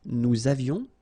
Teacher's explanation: little liaison, final S not pronounced